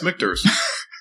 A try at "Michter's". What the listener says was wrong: You're putting a sh in it.